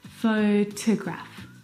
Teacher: The second syllable is unstressed and it is uh reduced down to the schwa sound.